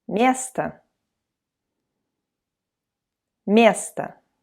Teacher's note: Место. So notice if you don't have the accent on o, so it's without any stress. We, Russians, like to say it as a.